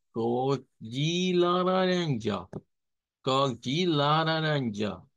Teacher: Recuerden esa A nasalizada, A media nasalizada